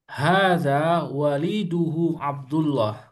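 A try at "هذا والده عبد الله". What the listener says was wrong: wa-nya panjang Mas, maaf.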